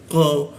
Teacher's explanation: Nah huruf qo dibaca dulu ee qo itu di siku tenggorokan lidahnya dinaikkan sehingga tidak ada hembusan udar ketika dibaca ya. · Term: tidak ada hembusan udara